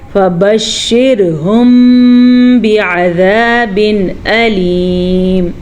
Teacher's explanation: جب بھی میم ساکن کے بعد اگر با آ جائے تو میم ساکن پہ دونوں ہونٹ بند ہو جاتے ہیں